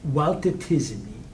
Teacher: a Navi word could not end in LT. So you'd have to add a vowel there.